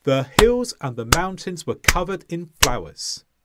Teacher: And it was the same with covered and with flowers. And again, all of the sounds between the stresses got squashed together so we could keep our rhythm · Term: keeping rhythm